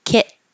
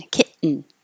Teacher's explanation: I'll put a little T right there to show that you you go to the T position but then you're not going to release the T